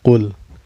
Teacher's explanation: Qul ya ayyuhal kafirun. Qul, ini lam mutlaknya, dibaca secara jelas ya, gak boleh dengung dan gak boleh memantul. Kul gitu. Gak boleh kul juga gak boleh ya, ditahan juga, tapi harus jelas.